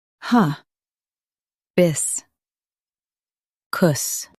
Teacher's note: Stress bis and soften kus.